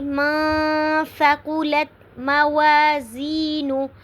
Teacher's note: نون ساکن کے بعد حروف اخفا میں سے سا آ رہا ہے، تو اس لیے یہاں پہ ہم آواز کو تھوڑی دیر کے لیے ناک میں چھپانا ہے۔